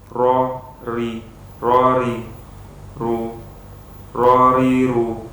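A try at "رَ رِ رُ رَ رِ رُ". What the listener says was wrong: Ya, usahakan untuk ketika fathah ro-nya jangan monyong ya. Kalau monyong akan berbeda lafadznya. Seperti ini lafadznya. Ro, ro.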